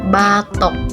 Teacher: vokal O tengah bawah belakang bundar pada kata batok.